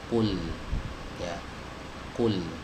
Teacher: Dan huruf qaf ini adalah huruf yang tebal. Ya, kenapa? Karena dia memiliki sifat isti'la.